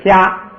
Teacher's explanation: 加这个ra呢，它就是元音延长，就是你读这个音的时候长一点